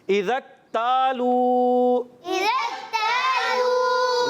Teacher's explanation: جب ملا کر پڑھتے ہیں الف مدہ ختم ہو جاتا ہے. ذال کی زبر جو ہے ڈائریکٹ کاف سے ملا کر پڑھتے ہیں تو یہ الف مدہ یہاں پر ختم ہو جائے گا